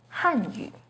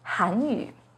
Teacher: The pinyin and tone for Hanyu is with the 4th falling tone on Han · The pinyin and tone for Hanyu has a 2nd rising tone on Han